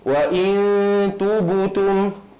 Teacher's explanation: Dia mengqalqalahkan ba itu seolah-olah berbaris hadapan kerana katanya meraihkan huruf ta sebelumnya baris depan.